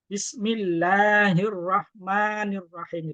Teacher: Jadi ma-nya cukup dua harokat saja, cukup ya, 2 kali ketukan lah. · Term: mat tabi'i